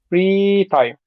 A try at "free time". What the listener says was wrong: But you're putting a lot of emphasis on time. Don't do that. Just free time.